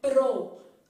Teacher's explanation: P, que é uma consoante bilabial, R, que é uma consoante vibrante, então eu falo pro. Observa que sua língua deu uma tremidinha assim, ó.